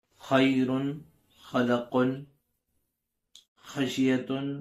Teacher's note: خا کا مخرج جو ہے حلق کا اوپری یعنی باہری حصہ ہے، جس سے خا نکلتا ہے